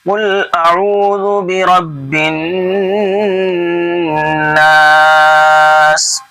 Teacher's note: را موٹا پڑھنا ہے کیونکہ را کے اوپر زبر ہے، اس لیے موٹا پڑھا جا رہا ہے